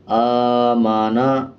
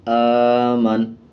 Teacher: نون کے اوپر کا جو زبر ہے اس کو سائلنٹ کر دیا جائے گا اور نون کی آواز کو آدھا پڑھا جائے گا۔ آمانا، وقف آمن۔